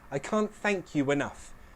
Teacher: link you and enough with a w sound. A w will intrude, sounding like I can't thank you enough.